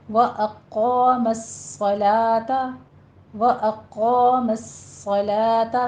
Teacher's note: صاد کے اوپر سیٹی کی آواز پیدا کرتے ہوئے صاد کو پر پڑھا جائے گا، تشدید ہے، سختی کیجیے۔ · صلوتا نہیں کہنا، صلاة لا باریک ہو جائے گا